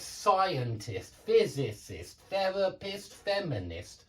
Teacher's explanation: it's always on two syllables back from the IST